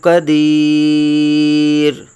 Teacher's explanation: قدیرن، را دو پیش آ گئیں، تنوین آ گئی دو پیش کی، تو وقف میں قدیر، را ساکن ہو گیا